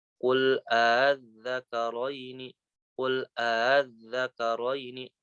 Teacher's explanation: hamzah yang kedua itu dibaca antara hamzah dengan alif aja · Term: tashil